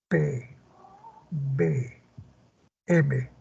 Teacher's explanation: te das cuenta que tus dos labios se juntan y luego se separan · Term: bilabiales